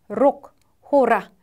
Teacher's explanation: 혀끝을 여러 번 진동시켜 나는 소리다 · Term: 르